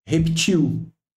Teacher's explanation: reptil é uma pronúncia oxítona dessa palavra e oxítona terminada em L não tem acento então isso aqui